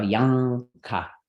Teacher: that's the N made in the back of your throat, like in sing · if you're going to make the sound K after it, you're going to make a velar N automatically. So Yanka.